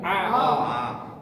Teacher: আইন জবর আ গলায় চাপ দিয়া